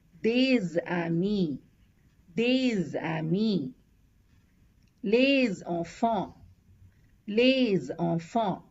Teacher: So we do a liaison and it is one single S. It has the Z sound.